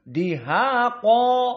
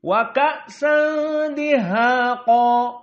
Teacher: Qa di akhir sehingga dalam keadaan qa panjang, maka tafkhimnya lebih jelas. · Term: tafkhim darajatul ula